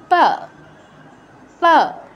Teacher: প বর্গের উচ্চারণ স্থান হচ্ছে উষ্ঠ। উপরের ঠোঁট, নিচের ঠোঁট, উষ্ঠ আর অধর এই দুটো একবার বন্ধ হবে, একবার খুলবে। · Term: প বর্গীয় অক্ষর